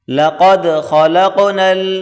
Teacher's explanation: خا کو موٹا کریں، قاف کو بھی بڑی کاف